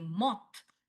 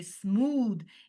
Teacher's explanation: Like when I say smooth, it's your v sound. But when I say moth, it's your f sound. It's the unvoiced. Smooth is your voiced.